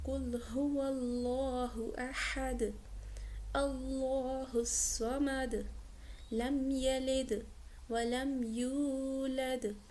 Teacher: ہر آیت کے آخر میں قلقلہ ہوا ہے کیونکہ ہم نے وقف کیا ہے، ٹھیک ہے، ہم نے کیونکہ آگے سرکل تھا نا، ہم نے وقف کیا تو جو بھی اس کے اوپر حرکت تھی وہ بدل کر سکون میں بدل گئی، ٹھیک ہے، چینج ہو گئی۔